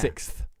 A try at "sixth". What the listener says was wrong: Not 6th. You don't do an S and then a th. sixth. S, the way I'm spelling it in my mind, SICKTH.